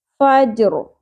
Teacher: ل شارٹ ہو گیا، عین کے مخرج کو صحیح اچھے سے ادا کرنا ہے وسط حلق سے، عل قلقلہ نہیں کرنا یہاں پہ، فج جیم ساکن آ گیا، قلقلہ ہوگا، رو کے نیچے جو زیر ہے یہ جزم میں بدل جائے گی کیونکہ آیت کمپلیٹ ہو رہی ہے، اور یہاں پہ ہم وقف کریں گے، فجر رو کو پر بھی کریں گے، کیوں؟